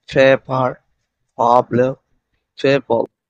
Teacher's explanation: এর উচ্চারণ হবে ফি, এই দুই ঠোঁট দিয়ে উচ্চারিত হবে